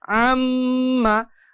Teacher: আর এই আম সময় দিতে গিয়ে আমাদের নাকের মধ্যে বা ভিতর থেকে একটা গুনগুন আওয়াজ বের হচ্ছে। এই যে গুনগুন আওয়াজটা নাকের বাসি হতে মূলত এটা উচ্চারণ করতে হয়। · আমি এই আম্মা উচ্চারণের ক্ষেত্রে শুধুমাত্র আম্মা এতটুকু সময় না দিয়ে অনেক বেশি সময় দিয়েছি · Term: গুন্নাহ